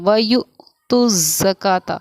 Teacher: حمزہ ساکنہ پڑھنے میں ہمارا جھٹکا ہوگا